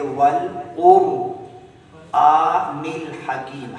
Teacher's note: تو پچھلے حرف پر یہاں قاف پر پیش آ رہی ہے تو قاف بذات خود موٹی آواز میں پڑھی جا رہی ہے، اس کے پیش کی وجہ سے را کو بھی موٹی آواز میں پڑھیں گے